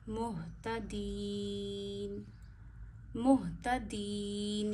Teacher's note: ह गले के आखिर से अदा करिए दो आंखों वाला ह भारी पड़ा जाता है मीम हा पेश मुह ता ज़बर ता मुहता दाल या ज़ेर दी या मद्दा है या साकिन से पीछे जीरो ना या को एक उंगली जितना खींचते हैं।